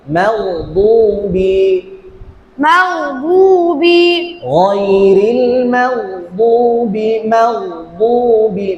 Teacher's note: আরেকটু গয়নের আওয়াজটা জারি থাকতে হবে। হ্যাঁ, মাগদুবি, مغضوب গায়রিল মাগদুবি, মাগদুবি, গয়নের আওয়াজটা জারি থাকবে।